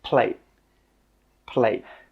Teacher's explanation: With that final T sound, we stop the air from coming out.